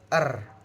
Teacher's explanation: ujung lidah bergetar dengan cepat saat melewati udara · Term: getaran